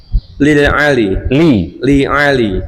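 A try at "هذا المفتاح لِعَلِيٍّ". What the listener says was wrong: Ya-nya ditasdid itu. Li aliyin.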